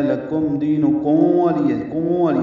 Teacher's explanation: کم میں ہونٹ بند کرنے ہیں اور واو الگ سے ادا کرنی ہے